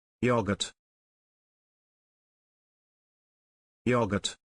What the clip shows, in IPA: ˈjɒɡ.ət